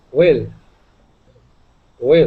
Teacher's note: instead of saying will and using the Italian I, that E sound, we want to use a short I